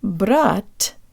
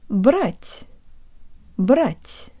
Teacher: While the tip of the tongue still makes contact with the back of the bottom teeth, the release is different, and I think my tongue may be pushed further forward and higher when I say the soft te. The part behind the tip is taking its time to come away from the roof of my mouth, and you can hear the air coming through the small passageway between my tongue and the roof of my mouth.